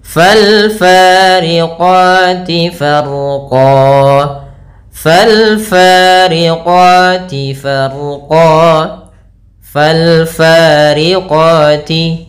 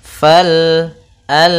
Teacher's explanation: ada alif lam qamariyah, yaitu lam alif dan lamnya dibaca dengan jelas